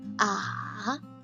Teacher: And third tone, this is special. You can see it's long, goes down and goes up.